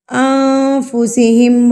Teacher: نون جب آپ پڑھتے ہیں تو آپ کی زبان اوپر جا کے لگتی ہے، تو جب آپ اکفا کریں گے تو زبان کو آپ نے ہوا میں چھوڑ دینا ہے، نہ کہ آپ نے اس کو مخرج کے ساتھ ٹچ ہونے دینا ہے. · نون ساکن کو آپ نے اپنے ناک میں چھپا کے پڑھنا ہے، تو اس کو کہتے ہیں اکفا.